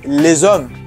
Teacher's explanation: The S is activated and changes to Z.